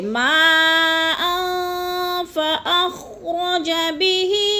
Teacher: الفی مد ہے، اور ان پہ تو اخفا ہو رہا ہے، 2 زبر تنوین کے بعد فا آ گیا حروف اخفا میں سے، تو ادھر آواز کو ناک میں چھپا کر پڑھنا ہے